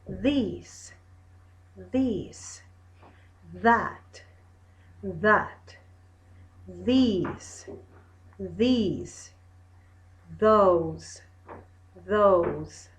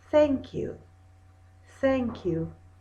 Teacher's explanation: vibration of the vocal cords no vibration in the vocal cords